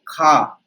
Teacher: खा आपका अघोष भी होगा, महाप्राण भी होगा, कंठ भी होगा, स्पर्श भी होगा।